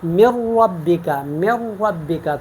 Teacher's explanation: نون بلا غنہ ہم ادغام کرتے ہیں، یعنی نون کو لام میں مدغم کر کے غنے کے ساتھ اس کو ختم کر دیتے ہیں، اور نون کو را میں ادغام کر کے اس کو غنے کے ساتھ ختم کر کے ہم ادغام کرتے ہیں اور یہ مشدد ہو جاتے ہیں۔